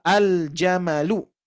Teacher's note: Otomatis lamnya dibaca jelas dan jimnya dibaca jelas pula ya, dan tanpa ada tasydid ya, tanpa diidghamkan kan, ini idhar ya.